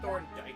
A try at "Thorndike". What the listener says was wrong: I don't know, Thorndike, yeah. Okay, so you don't know this, but there's literally a character in Sonic X named Chris Thorndike that no one likes, and I don't want to say Thorndike. So Thorndike.